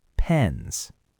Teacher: Now, let's take the word pen. The N sound is voiced. Your throat vibrates on an N, so the plural has to be a Z sound, and the vowel stretches.